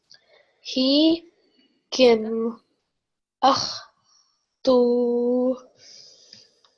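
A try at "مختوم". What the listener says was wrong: There's a meme at the end, so you have to pronounce that as well. Yusqawna min rahiqin makhtum.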